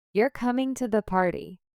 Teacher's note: Exclamation. Falling intonation with more emphasis.